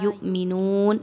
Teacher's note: لا یؤمنون، لام زبر الف، لا الف مدہ 2 حرکات کے برابر لمبا کر کے پڑھا جائے گا۔ یؤمنون میں دیکھیں تو حمزہ پر جزم کا نشان ہے، اس کو جھٹکا دے کے پڑھیں گے، می نون واو مدہ، نون پیش واو نو، 2 حرکات کے برابر لمبا کر کے پڑھیں گے، نون پر جزم لگاتے ہوئے وقف کیا جائے گا۔